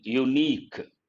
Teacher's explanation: It is a word that begins with a vowel letter, but you cannot use the general rule. Here, the sound U, ya sound, that is a consonantal sound